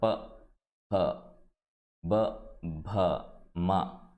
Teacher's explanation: ప హ బ భ మ. ఇవన్నీ కూడా పెదాలు టచ్ అయితేనే చెప్పేటువంటి లెటర్స్ అన్నమాట. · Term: ఓష్టి